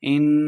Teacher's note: ان نون مشددہ غنہ کے ساتھ پڑھیں گے۔